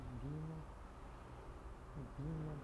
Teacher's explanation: O V e o B em muitas regiões, o V e B têm a mesma pronúncia, tá? Parecida com um B suave.